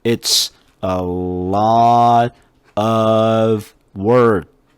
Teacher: work 할 때도 K자 소리 거의 안 냈죠